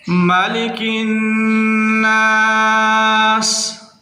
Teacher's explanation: مالک الناس، نون مشدد ہے، غنہ کرنا ہے، سین کی آواز کو سیٹی سے ادا کرنا ہے کیونکہ وہ حروف صفیریہ میں سے ہے